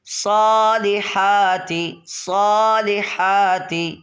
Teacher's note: وعاملوا الصالحات، ہا کی صحت لفظی کا بہت اچھے سے آپ نے خیال رکھنا ہے، یہاں پر ہا نہیں پڑھ دینا دو چشمے والا، بلکہ حلق کے درمیان سے